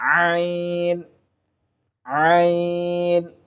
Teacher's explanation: হলকের মধ্যখান হইতে যে হরফটি আসে সেটি হচ্ছে আইন